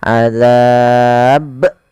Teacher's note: Maka ketika kita membaca ba yang disukunkan, maka ia harus dipantulkan. Kesalahan yang terjadi tidak memantul dan menambahkan hamzah, misalnya azab.